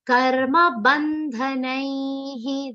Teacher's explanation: The visarga is pronounced like he and not her.